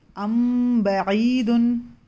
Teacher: मीम साकिन के बाद अगर बा आए तो मीम की छुपाकर गुन्ना करके पढ़ना है। यहाँ पर गुन्ना भी होगा 2 हरकत। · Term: इख्फ़ाए शफवी